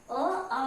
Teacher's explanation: अ, आ का कंठ के द्वारा बोले जाते हैं, इसलिए ये कंठय वर्ण है।